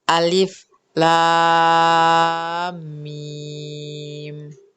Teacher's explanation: alif lam mim itu ditahan 2 sampai 3 harakat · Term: ghunnah